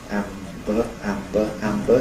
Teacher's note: to go from [m] to [b], what you do is move the soft palate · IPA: ˈæmbə, [ˈæmbə]